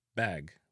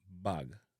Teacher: but in a Jamaica, we pronounce this bag with a relaxed A sound